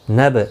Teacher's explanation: با ساکن پر قلقلہ ہوا